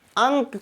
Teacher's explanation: जब हम अंक का उच्चारण करेंगे तो हमारे प्राणवायु जो है नाक से निकलेगी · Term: अनुस्वार